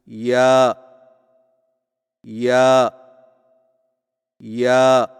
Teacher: जुबान के दरमियान को तालू की तरफ बुलंद करते हुए बारीक आवाज में पढ़े · یا کی ادائیگی میں زبان کے درمیان کو تالو کی طرف بلند کرتے ہوئے باریک آواز میں پڑھیں